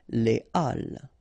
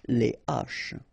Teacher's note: you won't have the possibility to make the liaison between your article and your word